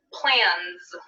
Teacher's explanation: now let's look at our example in the z category plan plan ends with a sound and is a voiced sound therefore we're going to choose the voiced z as our pronunciation for the s